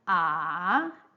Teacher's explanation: your pitch will drop first and then it rises again to a higher level a high a higher pitch so the pitch value is 2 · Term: third toone